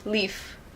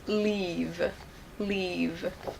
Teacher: actual time we're saying that vowel sound is shorter or longer so leaf is short and leave we stretch it out we say it for a longer period of time